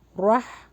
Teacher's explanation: یہاں پہ را کا مخرج ہیوی ہوگا اور ہا حلق سے نکلے گا